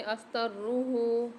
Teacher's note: را کے اوپر مشدد ہے اور ہا کے اوپر الٹا پیش اور مد ہے، 3 سے 4 الف میں دار ہا کو کھینچ کے پڑھیں گے۔